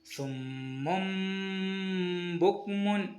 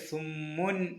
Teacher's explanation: നൂനിന്റെ ശബ്ദത്തെ മാറ്റി മീം ആക്കി ചെറുതായി മണിച്ച ഉച്ചരിക്കണം ഇതിനെ ഇക്കലാബ് എന്ന് പറയുന്നു സുമും ബുക്മൻ ഇവിടെ സുമൻ എന്നല്ല സുമും ബുക്മൻ · പിന്നെയുള്ള നിയമം, സുക്കൂണിലെ നൂനിന് ശേഷമോ തൻവീനിന് ശേഷമോ ബ എന്ന അക്ഷരം വന്നാൽ ആ നൂനിൻ്റെ ശബ്ദത്തെ മാറ്റി മീമാക്കി ചെറുതായി മണിച്ചുച്ചരിക്കണം. ഇതിനെ ഇഖ്ലാബ് എന്ന് പറയുന്നു.